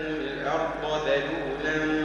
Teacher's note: اللطيف الخبير هو الذي جعل لكم الارض >> ارض ذل الارض فخم الضاد بعدين رقق الذال